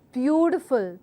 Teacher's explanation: so the word beautiful has to be stressed on the first part which is view and then followed it with the other stress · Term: word stress